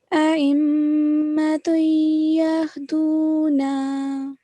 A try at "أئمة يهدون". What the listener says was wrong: Okay, you have to make a nasal sound, create a nasal sound here. So it will be a'immatun yahduna, yahduna.